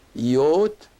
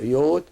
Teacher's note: And the iota here, as I said, is pronounced like a Y because it's followed by another vowel, which is the long O. So Yot. And with the definite article F, we use it here, F yod.